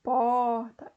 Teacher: o R retroflexo, que é aquele famoso R caipira do porta, é um tipo de variação social.